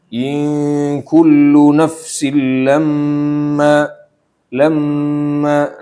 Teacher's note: Nah in ditahan dua harakat dikit aja.